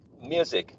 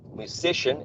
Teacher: music it's the first syllable and in the case you read musician is uh it's the second one